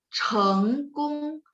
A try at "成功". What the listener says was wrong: Jadi 不是 nadanya salah. 成功。 Yes, bantu dengan tangan ya. Jadi 成功。